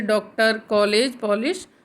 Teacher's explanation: इसे ए और ओ के मध्य की ध्वनि के समान उच्चारित करते हैं। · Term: अर्धचंद्राकार